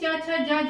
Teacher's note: अब ये संघर्षी भी है क्योंकि इनके उच्चारण में जो हवा है वो मुख से घर्षण के साथ निकलता है, यानी कि रगड़ के साथ निकलता है, इसलिए इसे स्पर्श संघर्षी व्यंजन कहते हैं।